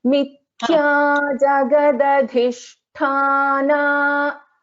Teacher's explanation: See here, mithya, tha is a mahaprana, and again jagadadhisthana. First da is alpaprana, second da is mahaprana